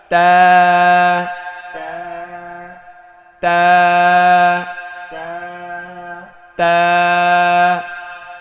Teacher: এটা মাখরাজ হচ্ছে জিব্বার আগা সামনের ওপরের দুই দাঁতের গোড়ায় লাগিয়ে